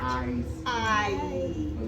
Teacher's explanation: We start with our mouth kind of open and then it closes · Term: long vowel I